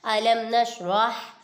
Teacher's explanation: ادھر میم ساکن کے بعد نون آ رہا ہے، ادھر اظہار شفیع ہوگا، ادھر گنہ نہیں کریں گے۔